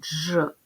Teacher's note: дві букви поряд д і ж в українській мові позначають один звук Дж він твердий